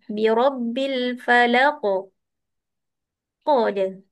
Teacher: huruf Qaf bila bunyi qalqalah dia bunyi seolah-olah huruf tersebut berbaris atas. Tapi jangan lama.